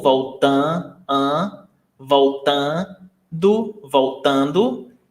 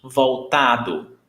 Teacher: So you see that this is nasal, voltando, voltando. And here, no nasal sound.